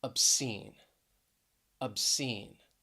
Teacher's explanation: obscene stress is on that second syllable